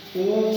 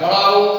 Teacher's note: यानी जब स्वर के उच्चारण में जीभा का पीछे का भाग कार्य करता है वह पश्च स्वर कहलाता है। ऊ, देखिए पीछे वाला ऊपर उठता है, पीछे वाला कार्य करता है, बड़ा ओ, ये पीछे वाला भाग कार्य करता है।